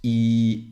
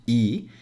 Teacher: my mouth is pretty close and my tongue is at the front and it's very high okay and I'm not rounding my lips